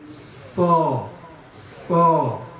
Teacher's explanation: Caranya seperti Sa, cuma pangkal lidah naik. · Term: huruf So